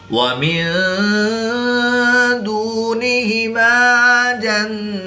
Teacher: نون ساکن کے بعد دال حروف اخفا میں سے ہے تو یہاں پر اخفا ہوگا یعنی غنہ زمانی کر کے پڑھیں گے۔